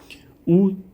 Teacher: ऊ जो है ये किस प्रकार का स्वर है? तो ये हो जाएगा आपका पश्च संवृत